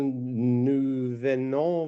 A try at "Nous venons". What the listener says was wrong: No, not venom. Nous venons.